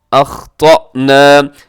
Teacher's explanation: کیونکہ یہاں حمزہ ہے، حمزہ جھٹکے کے ساتھ بولیے گا